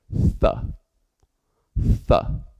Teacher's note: we place the tip of our tongue between the teeth and then blow air